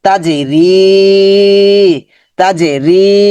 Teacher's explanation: জান্নাতিন, তিন কিন্তু অনুসর হয়ে যাবে তিন, তাজে তাজে তাজে কলকলা তাজে, রি, রিটা লম্বা হবে, জেরের পর জসমলা ইয়া মাদের হরফ